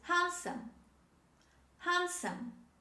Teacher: D is dropped when we say this word.